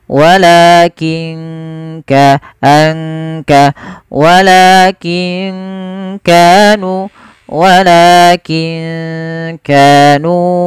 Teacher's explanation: Kaf makhrajnya dari pangkal tenggorokan kita.